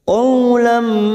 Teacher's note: ada fathah bertemu waw, namanya huruf lain, kita leburkan seperti bertemu dengan huruf abjad u